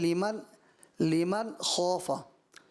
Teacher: لیکن لمن خوف، لمن نہیں بلکہ لمن خوف، زبان جو ہے تالو پر لگ جائے گی اوپر، لیکن جو ناک سے آواز نہیں آئے گی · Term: اظہار